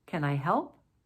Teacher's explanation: Yes or no, closed question, rising intonation. So in review, we see that closed questions, those yes or no type of questions, will have rising intonation.